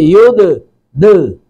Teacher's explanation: دال ساکن پر قلقلہ کریں گے